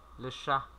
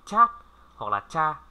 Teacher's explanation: Thêm một chữ H thôi, và âm ở đây chúng ta hay đọc là chat hoặc là cha, là bị sai vì là trong cái này không phải là âm chờ mà là âm sờ